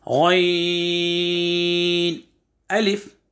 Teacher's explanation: गैन जो है हलक के ऊपर वाले हिस्से से अदा करना है